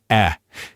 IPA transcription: ɛ